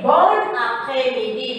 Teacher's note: So we have to say bon après-midi. We are going to link the N and the A.